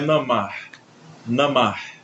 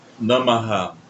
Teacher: Quando esse ha está no final dos mantras, geralmente se alonga esse ha e se acrescenta um a em vez de namar